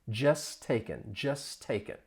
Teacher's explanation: Now, this is a phrase, but that just that t comes between two consonants. You don't hear it. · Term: Elision